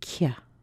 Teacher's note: The CU is also unstressed, but what we need to do there is make sure there's a little y in there. So we get a K sound, a k, and then a little baby y. So it becomes kya.